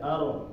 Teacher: Dia ini bergetar ketika mengucapkannya, tapi getarannya nggak banyak, cuma sekali aja. Arro. Nah, tebalnya tetap ya, tebalnya tetap. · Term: takrir